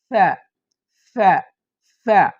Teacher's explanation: নিচের ঠোটকে ঠোটকে কামড়ে ধরে আবার ছেড়ে দিতে হবে বাতাস বের করতে হবে